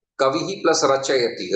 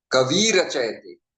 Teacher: So kavihi, e is short. But after the elimination of the visarga, it will become kavi rachayati, long e.